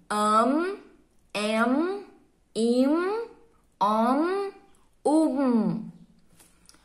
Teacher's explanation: Todas essas vogais que nós pronunciamos com a letrinha N e a letrinha M, depois delas, fica com um som nasal.